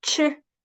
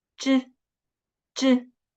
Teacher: 吃 comes with a much stronger air flow. Okay? 吃, but 知 doesn't.